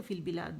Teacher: یہ فی جو ہے یہ یا مدہ ہے، مد اصلی ہے، 2 کاؤنٹ کے آواز نیچے جائے گی